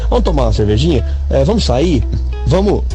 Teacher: eu tô comendo o S do vamos e eu tô comendo o R dos verbos no final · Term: supressão de fonemas